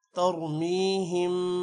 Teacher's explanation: را موٹا ہوگا، میم پر غنہ ہے